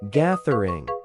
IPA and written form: ˈɡæðərɪŋ (gathering)